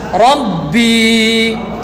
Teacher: Suara ba dia akan tersekat di dalam tapi masih lagi berbunyi ab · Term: huruf B, huruf ba